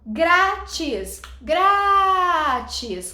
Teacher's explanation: Ó, é o gra, tá vendo? Então, grátis é uma palavra paroxítona.